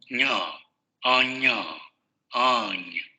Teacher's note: La lengua va a subir al paladar, principalmente la parte delantera y del dorso de la lengua sube al paladar, ahí es donde se produce el cierre de la cavidad oral. Todo el aire va a salir por la cavidad nasal y van a vibrar las cuerdas vocales. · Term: palatal nasal sonoro